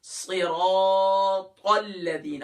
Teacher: Light کر کے پڑھیں گے۔ تو صرا، اب یہاں کیا صرا، صاد کے نیچے تو زیر ہے لیکن را کے اوپر اپنی حرکت ہے، وہ کیا ہے زبر ہے، تو ہم را کو موٹا کریں گے